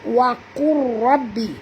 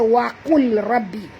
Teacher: Tak berbunyi lam, ya. Lam ni kita idghamkan, tak berbunyi. Jadi waqur, bukan waqul rabbi, tapi bacaan dia waqur. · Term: idgham mutaqaribain